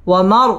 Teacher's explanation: ওয়াও ঠোঁট গোল করে উচ্চারণ করতে হবে